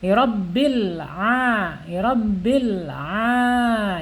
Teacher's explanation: karena ain ini makhrajnya ada di tenggorokan ya